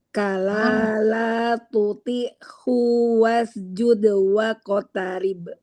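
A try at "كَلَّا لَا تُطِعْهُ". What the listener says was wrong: U-nya jangan dipanjangin. Kala. Kala. U-nya jangan ada hamzahnya.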